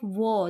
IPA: wən